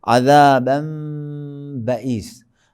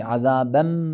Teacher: میم کو مکمل ادا نہیں کریں گے لیکن ہونٹوں کو مکمل قریب کریں گے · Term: اقلاب